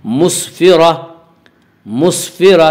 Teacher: وقف کی صورت میں گول تا ہائے ساکنہ بن جاتی ہے